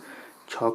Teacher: छ का उच्चारण स्थान होगा तालु